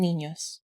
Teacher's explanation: an N made using the middle of your tongue against the roof of your mouth.